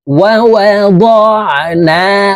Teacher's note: এই আইন হরফ হলকের মধ্যখান থেকে চাপ দিয়ে উচ্চারণ করতে হবে।